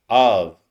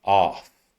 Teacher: the only exception that I know in English where an F is pronounced as a V.